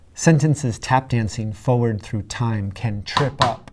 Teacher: Notice how this sentence starts out with a run of dactyls, which creates a flowing rhythm